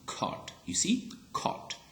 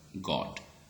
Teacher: So you see here that, you know, the first one was aspirated, okay, caught. After k, we sensed that, we heard that a puff of air, okay. But after g sound, we do not have any kind of aspiration